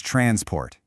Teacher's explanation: when we're talking about the action of moving something, the verb, that stress jumps to the second syllable. It becomes transport.